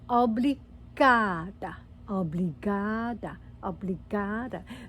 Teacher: So the intonation, the emphasis is on the last but one